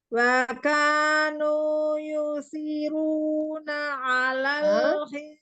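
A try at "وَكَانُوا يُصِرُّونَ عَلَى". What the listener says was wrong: Yusiru tasdid roh. Nunya 2 harokat. Nu 2 harokat.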